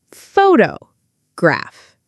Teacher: The stress is on the first part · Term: word stress